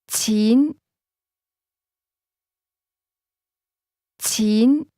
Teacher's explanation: Money is pronounced with a mid- rising tone.